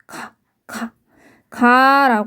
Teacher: 입의 아주 안쪽에 있는 혀뿌리가 살짝 위로 올라가면서 목구멍을 막고 그러한 소리가 기역입니다